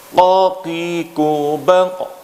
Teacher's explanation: pada waktu melafazkan qa, maka pangkal lidah naik mengenai ke langit-langit, yaitu langit-langit yang lunak. Langit-langit mulut lunak ini ketika kita raba, tidak ada tulangnya di situ. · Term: makhraj huruf Qaf